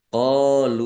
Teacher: Kaqad alladzina lamnya dibaca dobel ya ada tasdidnya dalal kasroh ya sukun mad thobi'i panjang dua harakat alladzina kata sambung atau isim mausul qolu qof fathah alif mad thobi'i panjang dua harakat · wawu sukun mad thobi'i tetapi karena bertemu dengan huruf alif di kata yang berbeda maka menjadi mad jaiz munfasil dibaca panjang boleh lima boleh dua harakat